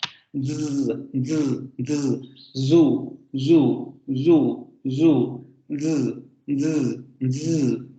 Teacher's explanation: esta consonante tiene la misma posición articulatoria, tanto punto como modo de articulación que nuestra S, la única diferencia es la vibración. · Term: alveolar fricativo sonoro